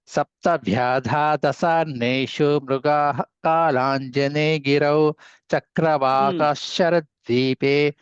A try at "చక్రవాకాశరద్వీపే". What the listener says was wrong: ఇక్కడ ఇదండి, చక్రవాక దీర్ఘం ఉందండి. చక్రవాక అంటున్నారు మీరు, హ్రస్వం. చక్రవాకాశరద్వీపే.